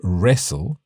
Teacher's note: in the word wrestle, we don't really pronounce the T